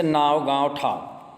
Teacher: अनुनासिक मतलब ईसन उच्चारण जे नाक और मुंह से होएला, मतलब नाक और मुंह से होता है और छोट रहेला।